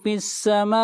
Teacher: فی السماء یہاں پر مد متصل ہے، اس مد کو 3 الف کے برابر کھینچ کر پڑھیں گے